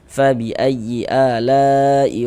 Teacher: Panjangnya mad wajib muttasil itu dibaca dengan panjang 4 sampai dengan 5 harokat · Fabi ayyi ala'i rabbikuma, huruf ra memiliki harokat fathah nih, tanda baca fathah, maka huruf ra dibaca tabkhim, dibaca tebal, sehingga dengan menaikkan pangkal lidah kita ketika kita mengucapkannya